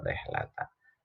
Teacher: ro yang berharokat kasroh itu tarkik, tipis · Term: ro tarkik